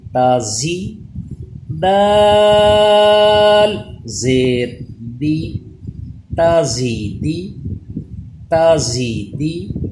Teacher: زا کے مخرج کے لیے اسے تھوڑا دبا کے پڑھیں گے، زبان دانتوں سے پیچھے رہے گی، اس پہ سیٹی پیدا کریں گے۔ رال اور زا، ان میں یہی فرق ہوتا ہے کہ رال پہ سیٹی پیدا نہیں کی جاتی دال پہ، اور زا پہ زبان دانتوں سے پیچھے رہتی ہے، اس پہ سیٹی پیدا کی جاتی ہے۔